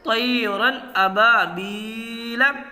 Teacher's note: تنوین کی آواز کو ظاہر کر کے بلا غنہ کے جلد پڑھیں گے۔ با الف زبر با، الف سے پہلے زبر ہے، اس لیے یہاں الف مدہ ہوگا۔